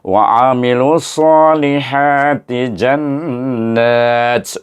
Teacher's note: Jim alif nun nun bertasyd hendaklah dibaca dengan wajibul ghunah dengan dengung dua harakat itu nama hukumnya wajibul ghunah dibaca dengan dengung dua harakat nama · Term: wajibul gunnah